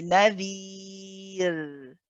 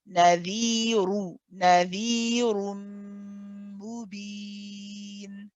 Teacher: if I stop on the word, then the ra is light